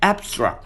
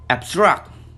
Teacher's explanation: abstract, adjective and noun. The stress is placed in the first syllable. Abstract, verb. The stress is placed in the second syllable. The change in the stress placement is affected by the word class. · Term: word class pair